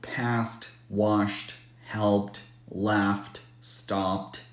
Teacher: if the word ends in a voiceless or unvoiced consonant the E is silent and the D is pronounced as t